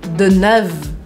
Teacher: Eu paro o som no V e eu faço esse Deneuve um pouco mais fechado.